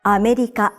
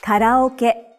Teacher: each syllable in Japanese is pronounced for the same length of time and gets equal stress